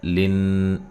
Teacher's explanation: نون مشدد پہ غنہ ضروری ہے